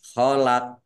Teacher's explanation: dibaca memantul ditampakkan pantulannya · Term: qalqalah kubra